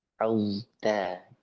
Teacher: benar-benar dia taknya tipis jangan sampai taknya apa tebal mengikuti huruf huruf zo